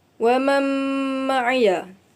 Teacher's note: idgham ma'al gunnah dengung dua harakat dan cara bacaannya idgham atau memasukkan huruf nun kepada huruf mim